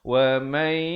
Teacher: Tapi di sini baca wa may, dengungkan dua harakat. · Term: idgham bi gunnah